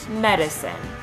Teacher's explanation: barred I is a high Central vowel and can be heard in the second syllable of medicine